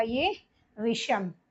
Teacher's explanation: दंत शा के स्थान पर मूर्धन्य शा हो जाता है। ठीक है ना, ये चीज आपको याद रखनी है कि मूर्धन जो आपका दंत शा है, इसके बाद यदि अ से भिन्न स्वर कोई आए तो वो आपका, ये आपका जो दंत शा है ये किसमें परिवर्तित हो जाएगा, आपका मूर्धन्य शा में परिवर्तित हो जाएगा।